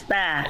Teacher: Bukan mustaqim to, bukan to tapi ta. Huruf ta huruf tipis.